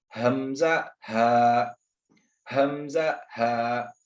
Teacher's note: हलक के हमने अभी हिस्से देख लिए, 3 हिस्से हैं, अक़साए हलक, वस्ते हलक, अदनाए हलक। तो मखरज नंबर 2 अक़साए हलक से अदा होता है